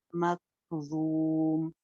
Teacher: मकज़ूम, ज़ौ जो है ये मोटी पढ़ेंगे, मीम लास्ट का साइलेंट करेंगे और मध्य आरिज लगाएंगे।